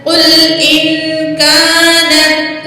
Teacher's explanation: अलिफ खाली माकबल ज़बर है, अलिफ मद है, 2 सेकंड खींच के पढ़ेंगे